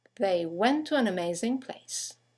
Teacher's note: two words one ending with a t the next one starting with the T they run into each other · you have the semi-vowel W that connects the vowels to and an to each other.